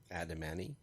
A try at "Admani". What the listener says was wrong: There's no A in there. It's just ADM. Admani.